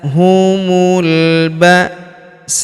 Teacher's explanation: Huruf sa kita panjangkan 4 atau 5 harokat karena di depan huruf sa terdapat alif yang di atasnya terdapat tanda garis bacaan panjang 4 atau 5 harokat yang ini ya.